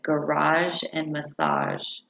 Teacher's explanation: the sound is a voiced fricative sound